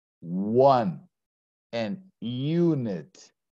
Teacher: they begin with vowels but the initial sound are those of the consonants W and Y